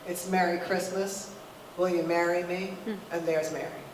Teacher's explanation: And when someone you love drops to his knee and says, will you marry me, M-A-R-R-Y. Those are 3 different vowels. But in the Midwest, they are all pronounced the exact same way.